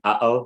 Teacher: There's a catch in the throat, like an uh-oh that we have, that in Arabic is a proper letter. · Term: glottal stop